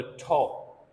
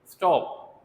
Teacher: टी जो है aspirated है वो भी टी है, स्टॉप यहाँ पर अनएस्पिरेटेड है